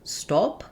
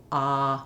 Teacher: One thing I recommend is if you have a tendency to round, so perhaps you say stop, to visualize it like stop with the AH, and that can help you make that open, unrounded ah. My tongue is all the way down, my lips have no rounding, and as this is a back vowel, I have space all throughout my mouth, ah, when I'm saying the vowel. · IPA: /ɑ/